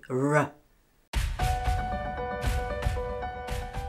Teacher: start with the tip of your tongue raised up towards but just behind the alveolar Ridge the tip of the tongue curve it upwards this lowers the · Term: r sound